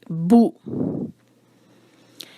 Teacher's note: با پر ہے پیش تو ہونٹوں کو گول اور آواز چھوٹی